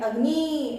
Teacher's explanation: ह्रस्व मात्रा को कम वक्त लगता है, इसलिए हम यहाँ पर अग्नि शब्द बोल के तुरंत रुक रहे हैं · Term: ई की ह्रस्व मात्रा